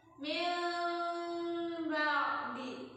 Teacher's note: mingkemnya itu ketika bunyi ba. Bunyinya agak dengung, kayak ikhfa, mirip-mirip ikhfa tapi enggak ikhfa banget. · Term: iqlab